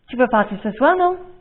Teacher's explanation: I've raised my voice for the word non.